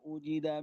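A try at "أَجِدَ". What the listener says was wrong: bukan ujida ya tapi ajida tadi dibacanya u coba ulang lagi deh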